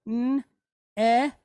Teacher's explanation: And then we have this nun, and it's pointed how? Segol, right? Short duration E type vowel.